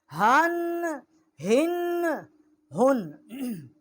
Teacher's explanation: یہ اقصائے حلق سے اس کا مخرج ہے، ہا کا، بڑی ہا ہے